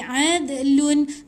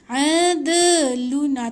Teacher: Bila mati kat tengah-tengah ni jangan tahan lama sangat dekat qaqalah ni.